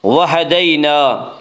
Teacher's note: یا لین کو نرم آواز کے ساتھ جلدی پڑھیں گے